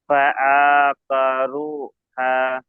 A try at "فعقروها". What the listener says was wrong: এই যে কেন টান দিলেন? আচ্ছা, দেখেন, এই যে করুহা, ওটাকে ইজরা করেন।